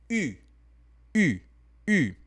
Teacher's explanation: Então, como é que a gente faz o biquinho dessa vogal U? Você vai falar a vogal I e fazer o biquinho, ó. U.